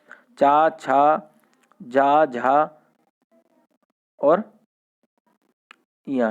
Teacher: चा वर्ग जो होता है हमारा स्पर्श संघर्षी होता है